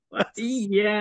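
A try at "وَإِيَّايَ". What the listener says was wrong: Itu belum cukup lah 6. Tapi macam panjang tu dah boleh pergi dah tu. Dia kadang-kadang mad asli ni yang tak boleh lebih daripada 2 harakat. Bila kita paksa lebih dia macam kelakar sikit.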